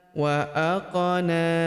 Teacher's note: Huruf qaf berharakat sukun kita pantulkan atau kita qalqalahkan. Wa aqana. Huruf na kita panjangkan dua harakat karena terdapat tanda alif kecil di atasnya.